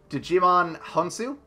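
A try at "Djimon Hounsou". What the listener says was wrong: I'm pretty sure the D is silent. That is the reference that I was making.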